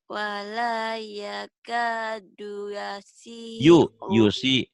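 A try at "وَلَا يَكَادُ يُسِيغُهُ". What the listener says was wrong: Yusiguhu. Ini G.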